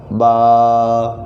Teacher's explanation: बा दोनों होंठों के तर हिस्से से अदा होता है